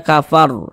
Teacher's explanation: Huruf ro tidak dibaca panjang, maka karena kita berwakaf tepat di huruf yang tidak dibaca panjang, hurufnya kita sukunkan sehingga dibaca kafar